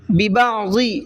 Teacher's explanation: ببعض، یہاں پر ضاد کو منہ بھر کے پڑھنا ہے